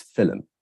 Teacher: there could also be a vowel insertion, a schwa vowel insertion